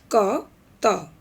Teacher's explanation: प्रश्नगत अघोष अल्पप्राण ध्वनि क और त है